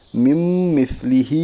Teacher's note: میم کے اوپر تشدید ہے، تشدید والے حرف کو مشدد کہتے ہیں، میم مشدد کے پڑھنے میں ایک الف کے برابر غنہ ہوگا۔ ہا کے نیچے کھڑا زیر ہے، کھڑا زیر برابر ہے یا مدہ کے، اس لیے اسے ایک الف کے برابر کھینچ کر پڑھی۔